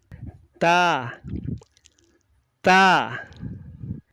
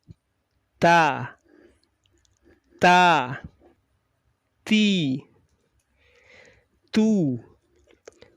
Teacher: ujung lidah mengenai pangkal dua buah gigi yang atas · yang kita rasakan sifatnya yang muncul syiddah dulu baru Hames berdesis jadi suara tertahan dulu baru ada desis